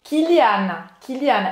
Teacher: E preste atenção de novo que não é Kyliane, tá? Não tem esse som nasal.